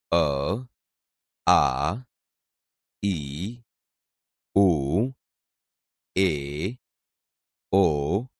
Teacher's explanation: આપણે અ, આ, ઈ, ઉ, એ, ઓ વગેરે બોલીએ છીએ ત્યારે આ ધ્વનિ મોઢામાં અવરોધાયા સિવાય સીધો જ સ્વર પેટીમાંથી આવતો અનુભવાય છે, જેને સ્વર કહે છે.